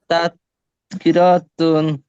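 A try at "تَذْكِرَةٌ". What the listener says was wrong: এই যে কি র টান দিচ্ছেন কেন? আচ্ছা দেখেন, তাহলে এই যে এই গোলটা ওয়াকফ করলে কি হয়ে যাবে? তাহলে গোলটা ওয়াকফ করলে হা হয়ে যাবে, ঠিক আছে? তাহলে এই যে র গে হা কে ধরবে, র হা জবর রহ।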